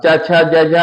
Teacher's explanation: तालव्य से ई च वर्ग, च छ ज झ और या सा का उच्चारण स्थान तालव्य से होता है